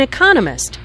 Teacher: notice the stress on Economist this content word has new information so it is emphasized there are four syllables in Economist with